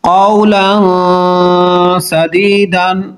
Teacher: نون تنوین کے بعد سین حروف اخفا ہے، اخفا کریں گے